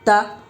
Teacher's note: تا کے اوپر زبر ہے، زبر کو جلدی پڑھے، تھوڑا بھی نہ کھینچیں. زبر کی آواز اوپر کو اٹھتی ہے، آواز اور منہ کھلے ہوتے ہیں